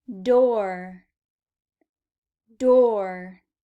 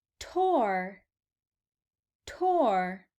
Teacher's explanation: D and T notice how the mouth position is the same the only difference is that the D is voiced and the T is unvoiced